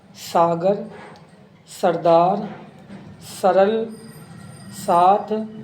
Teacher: इसे तालब श कहते हैं जैसे शक्तिशाली शायद शोषण शामिल आदि स एक सामान्य वर्ण है जिसका उच्चारण स्थान दंत है